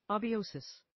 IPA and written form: ˌeɪbaɪˈəʊsɪs (abiosis)